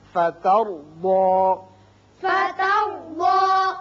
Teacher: تا باریک، را پر، ضاد بھی پر